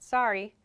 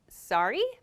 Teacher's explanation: when i have a question though i say sorry my intonation goes up